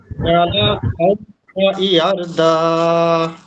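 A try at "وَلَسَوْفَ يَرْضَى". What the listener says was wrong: এটা কিন্তু দাল না, এটা অন্য কোনো হরফ।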